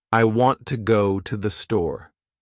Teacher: The words want, go, and store are strong. The others are weak. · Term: sentence stress